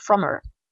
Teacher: Dans le langage oral, on aura plutôt tendance à faire la liaison et le H va passer à la trappe.